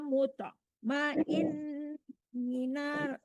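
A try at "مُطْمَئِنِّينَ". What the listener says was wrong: ya mutmainni panjang ni-nya ya Bu.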